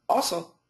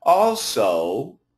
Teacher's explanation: when we emphasize the O sound, it actually is almost a diphthong, two syllables, like O, O.